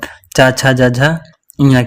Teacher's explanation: च वर्ग को बोलते हैं तालव्य वर्ण